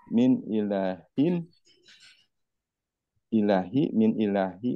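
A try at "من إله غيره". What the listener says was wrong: ilahin ditanwinkan.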